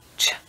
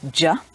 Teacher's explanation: And the other is unvoiced, just blowing air out of our mouth. So unvoiced is ch and voiced is j. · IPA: tʃ